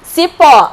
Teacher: a última sílaba é mais forte e termina em O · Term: oxítona